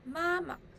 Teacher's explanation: Neutral tone is soft and short.